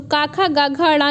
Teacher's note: इसका उच्चारण स्थान जो है वो कंठ है। तो का, खा, गा, घा, ड़ा जो है ये आपके कंठ के द्वारा ही बोला जाता है, मतलब इसका उच्चारण स्थान कंठ के द्वारा ही किया जाता है।